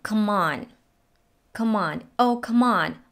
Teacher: The word come is pronounced with a schwa, come, and links to on, come on, come on, oh, come on.